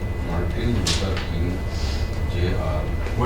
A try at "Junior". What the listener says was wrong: Wait, Junior. We see JR, but we say Junior.